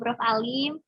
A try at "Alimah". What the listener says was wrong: Alim itu from Prof. Alimah. Jangan Alim saja, nanti Prof. Alim kok laki-laki gitu.